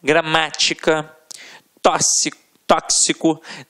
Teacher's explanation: a sílaba tônica sempre na antepenúltima sílaba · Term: proparoxítonas